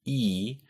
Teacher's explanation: for E, your tongue is all the way up and in the front of your mouth